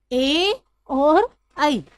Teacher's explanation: तो ए और ई जो है इनका उच्चारण स्थान होता है कंठ तालू